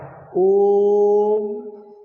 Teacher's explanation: ओम को तीन मात्रा का समय लगा करके बोलना है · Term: प्लुत स्वर